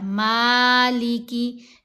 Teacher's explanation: مالکی یوم الدین، یہاں میم کے اوپر کھڑا زبر ہے، میم کو ہم نے ایک الف کی مقدار جتنا لمبا کیا